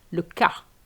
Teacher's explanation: you have to be very careful not to pronounce the S if you want to say the case, le cas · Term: The S is silent